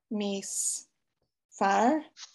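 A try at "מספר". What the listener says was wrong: I think there's a dot. Yeah, mis par.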